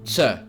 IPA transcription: ts